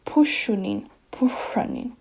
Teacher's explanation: You can kind of hear the whistling sound in the sh now.